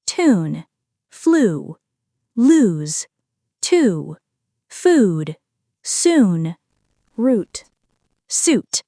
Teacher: This is the long, tense oo sound. The lips round, the tongue raises high and back, and the sound lasts longer. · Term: long vowel sound oo